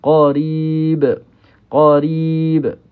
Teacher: kita wakaf di sini mad arid lisukun, huruf ba kena ada qalqalah lah, qalqalah kubra nama dia